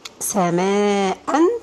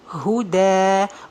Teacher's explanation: this noon is going to be changed to alif, sama, and this alif is going to be elongated for 2 counts. We do this only while stopping on the word, Sama'an is going to be sama'a.